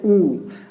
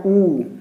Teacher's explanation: होंठ जो है वो सामने आएंगे और वो गोलाकृति बना लेंगे, जैसे कि हम लोग बोलते हैं ऊ। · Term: वृत्तमुखी